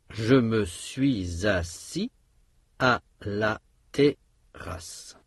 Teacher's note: Toutes les syllabes, à l'exception de la dernière race sont des syllabes ouvertes.